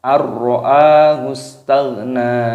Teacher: Huruf sinnya berharokat sukun dimatikan. Lalu di sini ada ghain yang berharokat sukun dibaca tagh, nunnya dibaca panjang.